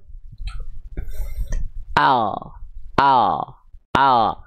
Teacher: huruf lam itu dilafalkan dari yang namanya haffatul lisan ya atau samping lidah